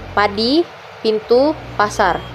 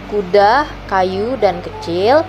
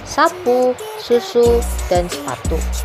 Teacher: Pita suara tidak bergetar saat udara melewati celah glotis, sehingga bunyi yang dihasilkan terdengar lebih keras atau lebih tajam. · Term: kontoid tidak bersuara